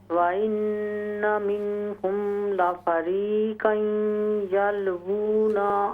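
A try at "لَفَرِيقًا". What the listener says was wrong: लफरीक़न क़ाफ को मोटा करें। लफरीक़न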